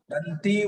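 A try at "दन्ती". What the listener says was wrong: గురువుగారు దంతి దీర్ఘం అండి ఆ దీర్ఘం వస్తుంది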